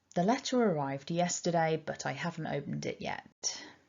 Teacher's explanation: but is just weak with the schwa it's not doing anything special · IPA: /ə/